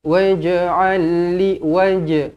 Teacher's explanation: Waj'al terus lantunkan dekat jim qalqalah.